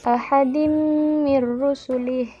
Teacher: Nah, selanjutnya ada hukum bacaan baina ahadim mir rusulih. Nah, ini hukum bacaannya tanwin bertemu dengan mim itu adalah idgham gunnah, yaitu harus berdengung